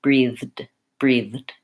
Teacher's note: we have to go right from the th to the D basically it's a matter of putting my tongue between my teeth